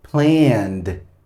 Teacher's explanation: Cuando la última consonante del verbo es sonora, o sea que sus cuerdas vocales vibran con el sonido de la N, entonces esta ed va a sonar como una D. Por eso digo planned, ¿ok?